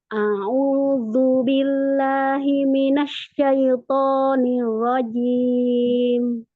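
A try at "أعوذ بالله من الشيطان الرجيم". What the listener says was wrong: untuk huruf shinnya, nah di situ di kalimat himinas, nah tadi di shin kita tekan terlebih dahulu. A'udzu billahi minasyaiton, agak ditekan di huruf shinnya.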